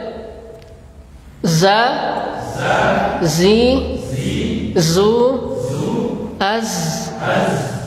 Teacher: Adapun sifat dari huruf zai ini, yang pertama jahar. Udaranya tertahan.